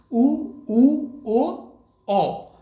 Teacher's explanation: वृत्ताकार स्वर कौन से हैं, जिन्हें बोलते समय ओठों की आकृति वृत्त के समान यानी कि गोले जैसी हो जाती है